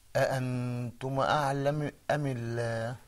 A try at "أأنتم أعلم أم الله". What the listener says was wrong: Okay, mashallah, we need to work on that dhamma, but that's okay, no problem.